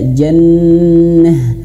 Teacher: huruf ta marbutah yang di akhir kalimat menjadi ha